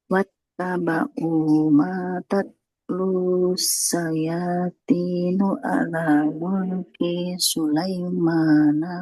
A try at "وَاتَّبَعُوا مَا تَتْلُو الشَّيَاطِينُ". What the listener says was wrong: Tatslu, lamnya tidak panjang ya. Wattaba'u ma tatlu syayatinu ala mulki Sulaiman.